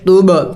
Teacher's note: توب قلقلہ کرنا ہے با حروف قلقلہ میں سے